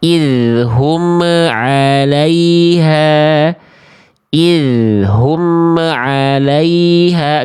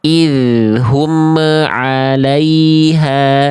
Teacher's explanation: Enggak boleh ada bunyi me di antara kita ketika melafazkan izhar syafawi